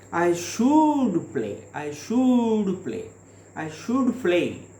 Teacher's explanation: the speaker uses the sentence like this by giving the stress on should